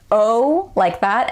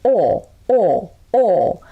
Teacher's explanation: at the end i'm kind of closing it into an oo sound